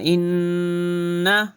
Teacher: یہاں پہ نون کے اوپر تشدید ہے تو گنہ کرنا